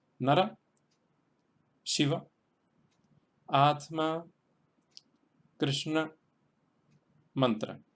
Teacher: Todas van acentuadas en la primera sílaba.